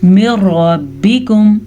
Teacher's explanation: اگر نون ساکن اور نون تنوین کے بعد لام یا را آ جائے تو دونوں الفاظ کو آپس میں ملاتے ہیں لیکن نون کو فارغ کر کے, بالکل غننے کے بغیر. تو اس لیے نون یہاں پہ ختم ہو جاتا ہے.